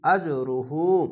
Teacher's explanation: আজরুহু উল্টা পেশে এক আলিফ টেনে পড়বেন, এখানে কলকলা ধাক্কা মেরে নিচে সাউন্ড আসবে।